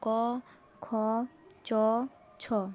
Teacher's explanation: ধ্বনি বাংলা স্পর্শ ব্যঞ্জনের অন্তর্গত প্রতিটি বর্গের প্রথম ও দ্বিতীয় বর্ণের উচ্চারণের সময় কণ্ঠস্থ স্বরতন্ত্রীয় কম্পন হয় না বলে কণ্ঠস্বর মৃদু হয় · উচ্চারণের সময় কণ্ঠস্থ স্বরতন্ত্রীয় কম্পন হয় না বলে কণ্ঠস্বর মৃদু হয়, এই কারণে এদের অঘোষ ব্যঞ্জনধ্বনি বলে।